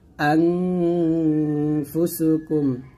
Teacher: নাকের ভিতর থেকে গুন্না আদায় করে পড়তে হবে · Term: ইকফা গুন্না